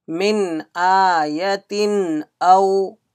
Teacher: Hamza came after Nun Sakin, there will be Izhar. There is no gunna here.